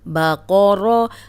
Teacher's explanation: اب قوف موٹا پڑھیں گے، را پہ زبر را موٹی پڑھیں گے، لیکن با کو موٹا ہونے سے بچائیں گے. با کو موٹا نہیں پڑھنا.